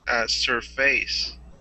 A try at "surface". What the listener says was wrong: First syllable stress. Surface. The f part is like a schwa sound, just an surface. There's an excellent example of when we miss the stress.